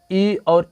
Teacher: ई और ई की बात करें तो किसका प्रयोग होता है? तो तालु का प्रयोग होता है।